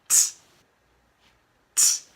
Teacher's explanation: I push the air out. No voice. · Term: t sound